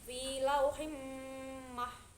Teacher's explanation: Lanjut di ayat terakhir, yaitu ada fi lauhim mahfud, itu ada bacaan mendengung atau idgham biguna karena di situ ada mim bertasydid atau harokat kasroh tanwin bertemu dengan mim, jadi cara bacanya di idgham biguna atau dengung